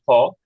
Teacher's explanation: বাংলায় যখন ফ বলি ফ তখন কিন্তু আমরা দুই ঠোট বন্ধ করে বলি